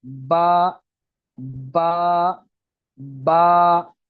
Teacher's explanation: और होंठ बंद करने के बाद जो हिस्सा बाहर हो, जो नजर आ रहा हो, उसको खुश्क हिस्सा बोलते हैं। तो दोनों होठों के तर हिस्से से बा अदा होती है।